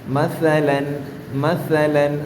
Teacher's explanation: ശബ്ദം വരരുത് സാ ഉച്ചരിക്കുമ്പോൾ മസലൻ മസലൻ നമ്മുടെ മേലെ വരി താഴെ വരി മുൻപല്ലുകൾക്കിടയിലൂടെ നാവ് അല്പം പുറത്തേക്ക് തെന്നി നിന്ന് അതിലൂടെ കാറ്റ് പുറത്തുവരുന്നതാണ് സ